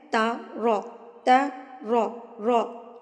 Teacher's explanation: را جو ہے پور یعنی کہ موٹا ادا ہوگا